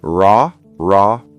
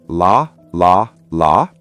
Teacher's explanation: The R sound in English is made deep in the mouth. The tongue does not touch the top. It curls slightly back like this, while the L sound touches the top of the mouth behind the teeth. So one is back and one is front.